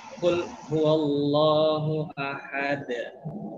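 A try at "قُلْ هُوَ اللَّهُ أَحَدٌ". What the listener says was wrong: Oke, stop dulu kan. Masih kul huwa. Kul huwa. Coba kul huwa. Tadi yang harus perhatikan adalah di huruf wawunya. Jangan kul huwa ya, tapi kul huwa.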